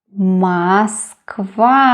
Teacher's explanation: Well, the letters are M, O, S, K, V, A. But the last syllable is stressed. That is why not Moskva, but Moskva, Moskva, Moscow.